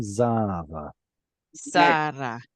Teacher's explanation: Usually it's the word zera, but at the end of the word, it gets an elongated vowel, pausal form, Zara. Zara.